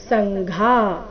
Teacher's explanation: ಸಂಘಾ ಘಾ ಮಹಾಪ್ರಾಣ ದೀರ್ಘ